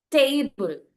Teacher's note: And ടേബിൾ, ടേബിൾ അതിൽ stress കൊടുക്കും, ബിൾ stress കൊടുക്കില്ല. ടേബിൾ ഫസ്റ്റ് സിലബിളിന് അല്ലെങ്കിൽ റൂട്ട് സിലബിളിനാണ് നമ്മൾ സ്ട്രെസ് കൊടുക്കുക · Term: root syllable